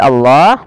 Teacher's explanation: lamnya dibaca dengan tebal maka kita namakan dengan lam tafkim yang dibaca dengan tebal